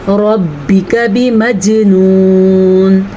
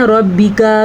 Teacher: रब्बिक बिमजनून, अक्सर लोग क्या करते हैं रब्बिका कर देते हैं। रॉ को तो आप पूर पढ़ेंगे लेकिन काफ को किसी सूरत में आप लंबा नहीं करेंगे, ठीक है। बिमजनून में जीम के ऊपर साकिन होने की वजह से यहाँ पे कलकला हो रहा है, जीम पे झटके की कैफियत पैदा होगी।